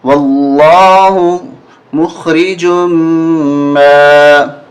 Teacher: یہ میم مشدد ہے جس پہ تشدید ہے میم پہ، تو اس وجہ سے یہ غنہ ہوگا یہاں پر۔ واللہ مخرج ما، کاف نون پیش کن، یہاں اخفا ہوگا نون پہ، کاف نون پیش کن، تا میم پیش تم، تا کاف زبر تک، تا پیش تو، میم واو پیش مو، نون زبر نہ۔